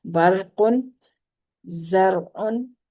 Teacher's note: ठीक है, तो इसकी मिसाल है, देखिए बरकुन है तो इसको जब हम पढ़ेंगे, यानी रा जज्म के साथ है, साकिन रा है, तो इससे पीछे जबर है, तो इसलिए इस रा को भी पुर पढ़ा जाएगा